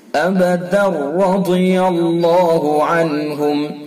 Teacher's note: ابدا رضی اللہ عنہم، دیکھیے دال کے اوپر 2 زبر کی تنوین ہے، اگر ہم ملا کر کے پڑھیں گے تو اس کے بعد را ہے، تو اس کے اندر ادغام ہوگا، اور یہ ادغام تام اس کو کہتے ہیں، یہ ادغام تام یعنی بلا غنہ، اس کے اندر غنہ نہیں ہوتا ہے